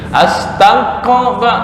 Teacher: Akhirnya ntar berubah ke makhraj qaf. Seolah-olah ini bukan kaf tapi qaf.